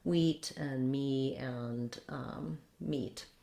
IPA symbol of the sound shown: i